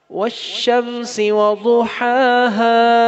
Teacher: ضاد کا خیال رکھنا ہے اور پہلی ہا حلق کے درمیان سے اور دوسری ہا حلق کے اینڈ سے. The first ha from the middle of your throat and the second ha from the end of throat.